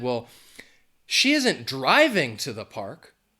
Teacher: if I'm emphasizing driving that means well she's not driving in a car she's going to the park in some other way maybe she's